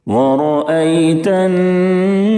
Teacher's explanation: یا ساکن سے پہلے زبر ہے یا لین ہوگی. اس کو نرم آواز کے ساتھ معروف پڑھیں گے اور جلدی ادا کریں گے